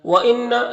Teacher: نون مشدد ہے تو غنہ ہوگا، یعنی نون کی آواز کو ناک میں لے جا کر گنگنائیں گے 1 الف کی مقدار